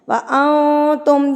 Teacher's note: نون ساکن پر اقفا کیا جاتا ہے، یعنی کہ اس کی آواز کو ناک میں لے کر جایا جاتا ہے